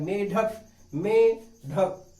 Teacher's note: जब आप ढक बोलते हैं तो आपकी जीभ झटके के साथ भगती है, तो झटके के साथ भगना ही क्या कहलाता है, ओक्षेप्य कहलाता है, क्षिप्त कहलाता है।